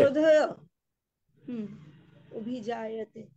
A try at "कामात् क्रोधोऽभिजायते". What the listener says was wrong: হয়ের জায়গায় অ উচ্চারণ করবে তো, তা তুমি হ উচ্চারণ করছো কেন? কামাত ক্রোধোऽভিজায়তে, कामः, कामात् क्रोधोऽभिजायते।